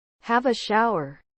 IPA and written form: hæv ə ˈʃaʊər (Have a shower)